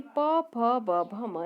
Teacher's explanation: इसका उच्चारण करते समय हमारी जिह्वा ओष्ठ को छूती है, इसलिए इसे ओष्ठ्य कहते हैं।